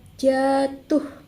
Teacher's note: Dalam tataran kata, silaba pertama pada kata jatuh diucapkan pada panjang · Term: durasi